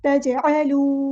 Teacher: अलिफ मद्दा आ गया है, तो हमने यहाँ पे एक अलिफ के बराबर लंबा करना है, मद इसलिए हो रही है, फला तजअलू। जीम पे हमारा कलकला हो रहा है, जब भी जीम साकिन दिखे तो वहाँ पे कलकला करना है, तजअलू नहीं पढ़ना, ठीक है, इसको हिलाना है, तजअलू।